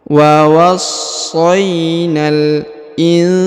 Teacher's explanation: huruf nun sukun bertemu dengan sa maka dibaca dengung dan disamarkan